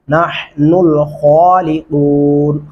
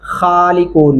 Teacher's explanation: खा को मोटा और पुर करके पढ़ेंगे